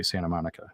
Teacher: you don't even hear the T when I say Santa Monica